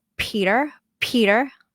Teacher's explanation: So p in English is more aspirated more air.